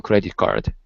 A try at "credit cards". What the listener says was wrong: so it has an s there on the end instead of credit card it's credit cards